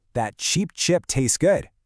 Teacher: we're mixing the wide long E first, followed by the relaxed short I.